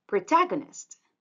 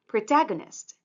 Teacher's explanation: example protagonist with the stress it's protagonist again protagonist the stress syllable is the second one